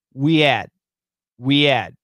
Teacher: Very common words, and almost always the H is silent. Silence. There's no H.